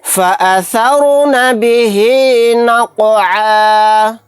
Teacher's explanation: فالمغیرات صبحا، فأثرن به نقعا، فأثرن به نقعا، یہاں پر رائے ساکنہ کو موٹا یعنی پر پڑھیں گے کیونکہ رائے ساکنہ سے پہلے زبر ہے۔ قاف ساکنہ، یہاں پر قلقلہ ہوگا